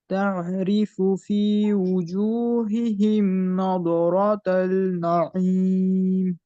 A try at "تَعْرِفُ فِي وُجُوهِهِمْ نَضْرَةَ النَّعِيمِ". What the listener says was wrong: এই দত কলকলা হবে না কলকলা হরফ কয়টা পাঁচটা কফ ত বা জিম দাল এই পাঁচ হরফে সুকুন হইলে অথবা ওয়াকফ করলে থামলে কলকলা হবে তাহলে দত কি নাই কুতুবু জাদিন বলেন কলকলাতু কুতুবু জাদিন মানে কফ ত বা কুতুবু জাদিন মানে জাম জিম দাল কুতুবু জাদিন সংখ্যা মনে রাখার জন্য কি করবেন কুতুবু জাদিন কলকলার হরফ